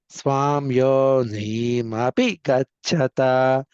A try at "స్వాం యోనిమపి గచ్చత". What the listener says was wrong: మీరు ఆ పెదవులు కలపవాకండి. స్వాయోని స్వాంయోని. స్వాము అనేప్పుడు పెదవులు కలిపేప్పుడు మకారం పడుతుంది. ఇక్కడ సున్నాను చెప్పాలి. స్వాయోనిమపి గచ్చత.